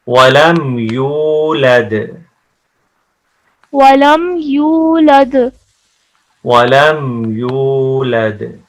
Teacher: دال کے اوپر کلکلا ہے، ایکو ساؤنڈ ہے